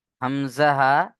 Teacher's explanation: কণ্ঠনালীর শুরু হতে উচ্চারণ হয় হামজাহা